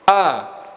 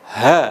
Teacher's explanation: huruf hamzah nafasnya ditahan huruf H nafasnya dilepas